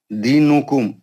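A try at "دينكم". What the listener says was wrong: پھر یار پیش کیوں نہیں پڑھتے یار؟ اب زیر زبر پیش پڑھیں گے, اب سب چھوڑ دیں گے پورے قاعدے, نون ساکن میم ساکن کی ایسی کی تیسی. اب زیر زبر پیش پڑھیں گے, بے زبر با, تے زبر تا, سین زبر سا, زال. اب زیر زبر پڑھیں گے.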